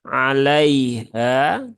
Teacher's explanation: adalah harfulfulin ya atau sifat Lin harfulfulin yang memiliki sifat Lin Lin itu artinya halus ya maka haluskan saja alaiha tidak perlu di tekan berlebihan